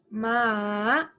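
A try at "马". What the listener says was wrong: Okay, this one, you cannot start with the first tone. You must start with the tone going down and then going up. Ma. Your issue is tone number 3.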